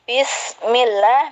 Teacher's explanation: millah adalah bacaan tarkik atau tipis